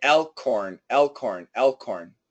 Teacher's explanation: the H is going to be pretty weak. There's a little bit of an H, but not much. So, basically, what we hear is kind of an elorn.